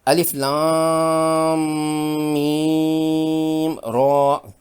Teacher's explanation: پہلے 2 حروف یعنی الف اور لام اسی طرح ادا کرنے ہیں جیسے کہ ہم نے حروف مقطعات الف لام میم میں سیکھا تھا۔ حرف را پر کھڑی زبر سے یہ الف مدہ کے قائم مقام ہے، 2 حرکات کھینچ کر ادا کرنا ہوگا۔ اس را پر کھڑی زبر ہونے کی بنا پر اسے پر اور موٹا کر کے یعنی تفخیم سے پڑھیں گے۔